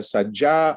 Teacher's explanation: you get you know quite massive final lengthening and the coincidence of a beat gesture this would not happen